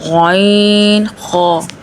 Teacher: غین، خ یہ ادنیٰ حلق سے ادا ہوتے ہیں یعنی ابتدائی حلق سے اوپر والے حصے سے ادا ہوتے ہیں